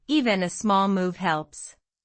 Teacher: Even a becomes even a then links to the small move. The l small is dark and it links to move smoothly.